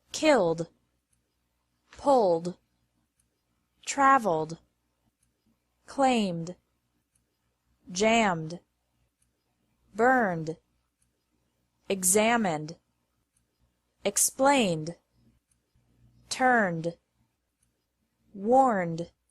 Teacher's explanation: Ed is pronounced like d after verbs ending in an L M or n Sound